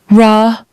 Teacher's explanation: lips get round and tense tongue pulls back and does not touch anything